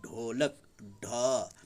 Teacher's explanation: ढ कहने के लिए जीभ फिर ऊपर गोल हो जाता है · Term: उच्छिप्त वर्ण